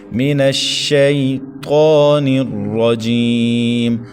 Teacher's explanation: طا کو ایک الف تک کھینچنا ہے۔ را کو زبر کی وجہ سے ہم نے پر پڑھنا ہے، اور جیم، جیم کے بعد یا ساکن، یا ساکن سے پہلے جیم کے نیچے زیر، تو یا مدہ ہے، ایک الف تک کھینچیں گے۔